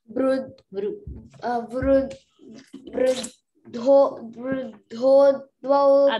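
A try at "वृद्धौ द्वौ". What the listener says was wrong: Dho no, hold on, not dho, dho. Vruddhau dvau au.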